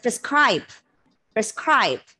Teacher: So it's a verb. Second syllable has to be stressed. Schwa in the unstressed syllable.